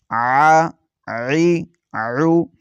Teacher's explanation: حلقے درمیانی حصے سے ادا کریں گے عین کو